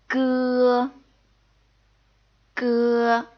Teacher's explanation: G is unaspirated. Again, we're not blowing air out. So it's a little bit like the K in sky.